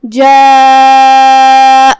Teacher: مد واجب متصل میں ہم اپنی آواز 4 مد کے برابر لمبی کریں گے. جاء، آخر میں حمزہ پہ زبر ہے، دھیان رہے ہم حمزہ کو صرف زبر سے ادا کریں گے، اپنی آواز لمبی نہیں کریں گے تاکہ مد الف نہ ظاہر ہو.